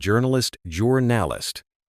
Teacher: stress the first syllable in journalist juralist, not jur nist.